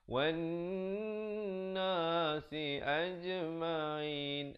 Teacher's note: dengung nun sabdu, wajibul ghunnah. Jadi kalau kita baca wan nasi ajma'in, salah.